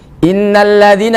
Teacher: didengungkan dulu selama dua harokat jangan sampai kurang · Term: hunah